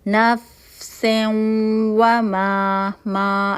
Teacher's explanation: ہم نے فوراً اگلا حرف دیکھا واو ہے. نون کو واو کے اندر مرج کر دیں گے. ساری کوالٹیز مرج ہو گئیں، صرف غنہ کی کوالٹی مرج نہیں ہوگی، تو یہاں پہ ادھورا ادغام ہو رہا ہے.